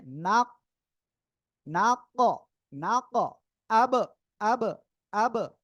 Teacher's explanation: নাক আরেকটা কি নাক এই যে কফ অক্ষরটা কি এখানে আসছে সাকিন অবস্থায় আমরা ধাক্কা দিয়ে পড়তেছি যেটা ডাবল আওয়াজ হচ্ছে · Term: কম্পন